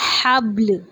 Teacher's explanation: لام کی آواز آئے گی ہلکی سی وقف کی صورت میں